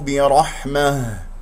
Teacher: نقف على هاء ساكنة مهموسة يجري فيها الصوت والنفس باهتزاز الأوتار الصوتية، كسرة الباء ب، الراء مفخمة لأنها مفتوحة، والحاء يجري فيها الصوت والنفس برحمة.